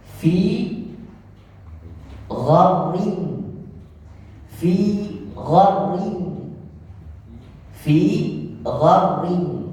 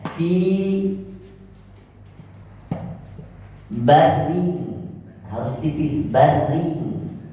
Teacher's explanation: maka huruf ro yang tadinya tipis tidak bisa ditipisin, tetapi harus ditafkhim, harus ditebalkan karena di belakangnya huruf isti'la. Kalau tidak masuk huruf isti'la, huruf selain isti'la, maka ini harus dibaca tipis.